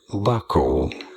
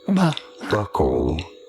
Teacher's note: you do want to stress on the first syllable on the B syllable